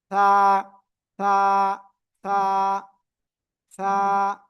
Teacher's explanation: জিহ্বার আগা, এই উপরে এই যে 2 দাঁত, এই 2 দাঁতের আগায় লাগিয়ে আপনার উচ্চারণ করতে হবে, হালকা নরম করে বাতাস বের করতে হবে।